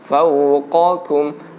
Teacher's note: Huruf qaf itu tipis, huruf kaf itu kuat dan ada udaranya. Kalau qaf tidak ada.